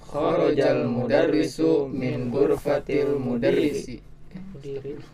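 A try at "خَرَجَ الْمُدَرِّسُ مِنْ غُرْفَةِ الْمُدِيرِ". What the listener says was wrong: Ya, mudiri, ya, bukan mudarris, ya.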